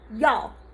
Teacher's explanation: writing the English it's too much and the pinyin is y'all fourth tone so you sound mad when you're saying it it's very abrupt